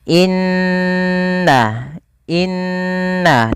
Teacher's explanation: Perhatikan pada lafal inna, ini ditahan teman-teman. Nunnya wajib tahan. Yang menahan adalah bunyi n-nya. Inna, inna, tidak langsung dibaca innalladzi, tapi tahan dulu.